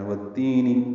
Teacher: یا مدہ مدہ اصلی ہے، اس کو دو حرکات لمبا کرنا ہے